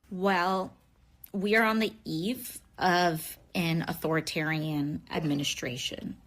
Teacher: So she's the vocal fry, yes, along with that. The vocal fry, and the up talking.